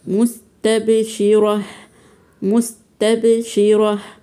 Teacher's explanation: الباء هنا ساكنه ودي من حروف القلقله